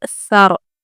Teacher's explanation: सा को पहले अच्छे से बारीक आवाज़ से पढ़ेंगे, फिर रॉ को पुर करेंगे